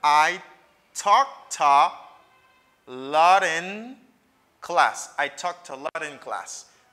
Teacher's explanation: Vin gen yon fast D, yon tap D, te yon prononce tankou yon D rapide la, ki vin fon liaison entre N na.